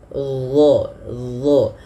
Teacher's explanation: huruf dha ini dia makhrajnya sama dengan huruf dzal, akan tetapi yang membedakan adalah huruf dha ini harus ditebalkan. Dha, pangkal lidah kita naik karena ada salah satu sifatnya huruf isti'la.